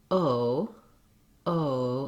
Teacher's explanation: the o sound is a diphthong which means it's a glide between two positions in the mouth for the vowel · No gliding, no change of the sound. In English, we glide from that tense back rounded O to a more closed, less open, and slightly more lax, less rounded. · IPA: /oʊ/